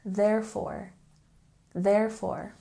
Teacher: don't forget we have a stress on the first syllable.